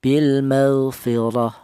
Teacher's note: Ini dibaca tafhim atau dibaca tebal. Di mana untuk menebalkan huruf ra yang berharakat fathah ini menggunakan lidah bagian belakang diangkat ke atas ya